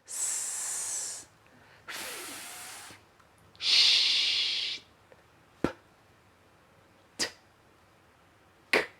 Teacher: These sounds just use air, we don't use our vocal cords. If you put your hand here, you will notice that you don't feel a vibration. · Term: voiceless sounds